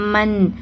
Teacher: சுக்குன் பெற்ற நூனை தொடர்ந்து ஹம்ஸா வந்திருக்குது. இந்த சுக்குன் பெற்ற நூன இஹார் செஞ்சு ஓதுங்க. ஏன்னா இங்க இஹருோடைய ரூல் தான் அப்ளை ஆகும்.